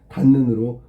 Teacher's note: 앞말의 받침 디귿이 뒷말의 첫소리 니은을 만나서 니은으로 바뀌는 거지. 그런데 여기서 중요한 건 뭐냐면 이 디귿이 니은으로 교체된 건데, 교체에 영향을 준 건 뭘까?